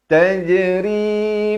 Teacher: Dan ra ni baris kasrah dibaca nipis. Macam tersenyum.